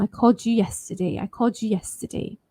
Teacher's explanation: the D sound is somehow merged or assimilated into the Y sound. I called you, producing this sound, J sound.